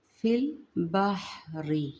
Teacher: با کو حا کے ساتھ ملائیں گے نرمی کے ساتھ، بحری، بحری نہیں کرنا، بحری۔